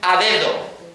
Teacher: Ahora di a dedo. Verás que pones la lengua entre los dientes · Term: fricativa